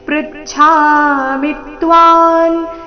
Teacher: ಪ್ರಚ್ಛಾಮಿ ಮಿ ರಸ್ವ ಅದರ ಮೇಲೆ ಆಘಾತ